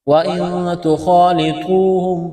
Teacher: نون ساکن کے بعد تا ہے، حروف اخفا ہے، غنہ کریں گے، آواز ناک میں چھپائیں گے ، خا کو موٹا کرنا ہے، الف سے پہلے زبر ہے، · ہے، الف سے پہلے زبر ہے، الف کے برابر کھینچنا ہے، طا کو موٹا کرنا ہے، واو ساکن سے پہلے پیش ہے، حروف مدہ واو ہے، الف کے برابر کھینچنا ہے ، خا کو موٹا کرنا ہے، الف سے پہلے زبر ہے،